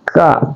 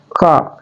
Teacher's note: Nun itu adalah huruf al-khaisun, dia juga adalah tarful lisan atau keluar di ujung lidah. Kemudian kaf adalah aqsal lisan atau pangkal lisan kita, dia keluar huruf k ini, k.